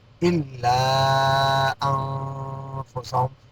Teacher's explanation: نون ساکن کے بعد فا آ گیا، اخفا ہوگا